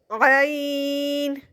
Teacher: ادا ہوتا ہے آپ کے حلق کے درمیان والے حصے سے